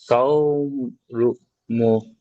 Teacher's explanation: ওয়ালিন নরম আওয়াজে তাড়াতাড়ি পড়তে হয়, টান দেওয়া নিষেধ।